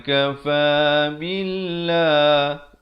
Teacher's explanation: Lafaz jalalah ni dibaca nipis, dua harakat.